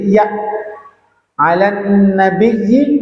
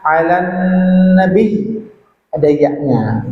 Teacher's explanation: Maka kalau wakaf, ya, kalau kita ngajak orang bersolawat, ya, maka menjadi ya alan nabiyyi, wakafnya alan nabi, ada ya-nya. Jadi ada getaran makharijul huruf pada lidah kita tengah, ya, karena iya itu makharijnya di tengah lidah. Jadi bukan polos alan nabi, bukan.